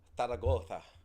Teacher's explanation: Y'all know how the Spaniards pronounce their S's and C's? They just don't say them. They say them like a th.